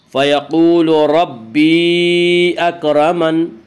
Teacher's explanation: اکرمن کی را کو پر پڑھا جائے گا۔ اس کا قاعدہ ہے کہ را کے اوپر زبر پیش آئے تو را کو پر پڑھا جائے گا، را کے نیچے زیر آئے تو را کو باریک پڑھا جائے گا، را کے اوپر زبر، اس سے را کو پر پڑھیں گے۔